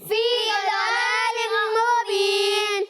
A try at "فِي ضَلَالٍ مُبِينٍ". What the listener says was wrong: ضاد کو پر پڑھنا ہے، باریک نہیں پڑھنا، ٹھیک ہے، دلالم نہیں، فی ضلال مبین۔